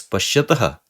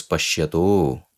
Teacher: it combines with the preceding a and they both change into o due to guna sandhi. So to simplify this rule, we just say it is a utva sandhi, but it is like a two-step process.